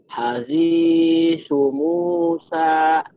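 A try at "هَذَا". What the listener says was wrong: Hazisu Musa. Tadi Bapak, hazisu, su-nya panjang. Pendek.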